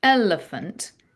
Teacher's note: And if you say the word elephant at home, elephant, you're going to notice that you're accenting that first syllable more